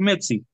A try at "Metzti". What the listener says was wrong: No, Metzti, con T. Metzti, Metzti. No, así como está escrito aquí, Metzti. Metzti. No Metzi. Metzti.